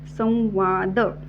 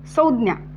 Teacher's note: पुढचा जो वर्ण आहे तो व युक्त होणार आहे कसा तर या अनुस्वारामध्ये जो उच्चार आहे तो व चा उच्चार सुद्धा आहे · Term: व युक्त उच्चार